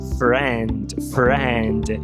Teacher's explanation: O nome técnico é vogal, média, baixa, anterior, não arredondada